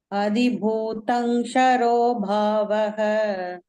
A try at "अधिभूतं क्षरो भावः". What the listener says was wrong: There's a subtle difference between Shankara and Kshama, Kshetra. That K will be added. K-S-H-A, Ksha. So this is to be pronounced with that Ksha. Adibhutam Ksharo Bhavaha.